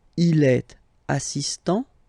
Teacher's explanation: So don't pronounce the final t here.